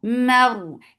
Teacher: keep mim light, but ra will be heavy because there is fatha before it. Mar, and give tawassut.